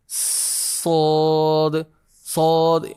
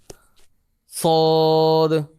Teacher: تو اس کا ادا کرتے وقت ایک آواز تیز مثل سیٹی کے نکلتی ہے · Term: صفیر